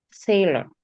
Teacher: the British pronunciation, the R sound isn't added.